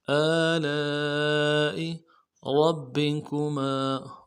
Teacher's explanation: لام کے ساتھ الف مدہ ہے، الف مدہ کے اوپر مد اصلی ہے، 3 الف مدار میں کھینچیں گے · را کو موٹا کرنا ہے ، با کے ساتھ ملائیں گے، با کے اوپر تشدید زور